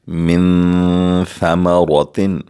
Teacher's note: ہم نون ساکن کے بعد آواز ناک میں لے جا کر 2 سیکنڈ کے لیے غنہ بھی کریں گے اخفا بھی کریں گے کیونکہ ثا حروف اخفا میں سے ہے من ثمرات پھر ہم